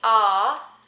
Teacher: the ah as in father is unrounded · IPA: ɑ